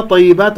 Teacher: الطاء مفخمة مرتبة ثانية مفتوح